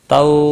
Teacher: واو لین ہے، تھوڑا نرمی کے ساتھ کھینچ کر ادا کریں گے